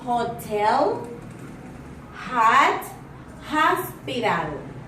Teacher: According to voicing is voiced. Place of articulation is glottal. Manner of articulation is fricative,